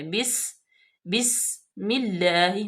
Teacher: سین پہ سیٹی کی آواز واضح طور پہ آئے، بس، بسم اللہ، ہونٹوں کو ایسے چوڑا کر کے، اس کو بسم اللہ نہیں کریں گے بلکہ بسم اللہ۔